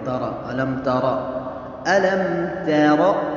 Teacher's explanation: تا کو باری اور را کو پر پڑھنا ہے